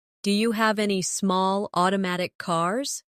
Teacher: Do you becomes da naturally